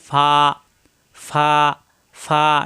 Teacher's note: উপরের দুই দাঁতের আগা নিচের ঠোঁটের পেটে লাগবে দুই ঠোঁট একত্র হবে না ফা ফা ফা নরম করে ফা 15 নাম্বার মাখরাজ দুই ঠোঁট